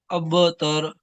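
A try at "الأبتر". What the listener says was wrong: तार खींचेंगे नहीं, अब तर। तर एकदम से, तारा जबर तर।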